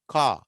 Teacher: ఆ రా sound last లో ఉంటే అసలు పలకనే పలకము